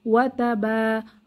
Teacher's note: ওয়াও জবর ওয়া, তা জবর তা, ওয়া তা, বা আলিফ জবর বা। এখানে জবরের বাম পাশে খালি আলিফ, মাদের হরফ, এক আলিফ টানতে হবে।